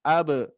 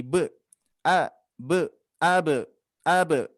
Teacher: ada huruf ba qalqalah yang harus dipantulkan